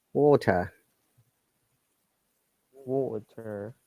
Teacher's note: the r is not pronounced at all in most of the cases and they are replaced by vowel sound